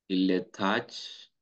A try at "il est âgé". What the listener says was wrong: il est âgé. If you say âge, so âge is a word that exists in French, but that's the age. Un âge, that's the noun, l'âge.